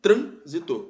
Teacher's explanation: a anti penúltima sílaba é mais forte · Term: proparoxítona